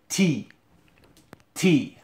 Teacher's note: My tongue goes right behind my teeth. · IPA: [ti:]